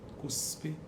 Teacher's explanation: em posição final de sílaba, as sibilantes são desvozeadas.